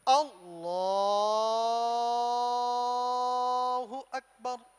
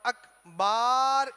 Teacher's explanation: खींचने में सिर्फ एक ही मकाम है जिसे खींचा जा सकता है, वो लफ्ज़े अल्लाह की लाम